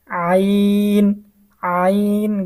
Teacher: অর্থাৎ হামজা জবর আইন জবর যদি আমরা আ বলি তাহলে আমাদের উচ্চারণটা হচ্ছে না। আইন আইন গলা চেপে বলতে হবে